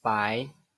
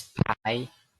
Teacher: The only difference is the aspiration of the first segment.